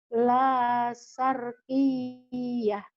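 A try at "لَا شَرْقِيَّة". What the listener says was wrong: la syarqiyah shin. boleh shinnya belum keluar tuh.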